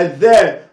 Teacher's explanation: يعني بحط طرف لساني بين اسناني وانا بنطق الحرف ده الذاء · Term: الحروف اللثوية